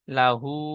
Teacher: উল্টা পেশকে ও মাদ্দার মতো এক আলিফ পরিমাণ টান দিয়ে পড়তে হয়।